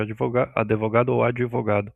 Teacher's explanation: No português falado no Brasil, não existe a pronúncia natural de uma consoante totalmente muda, sem vogal depois. Quando tentamos falar advogado com D estritamente mudo, nossa boca naturalmente insere uma pequena vogal para ajudar na transição das letras. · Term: epíntese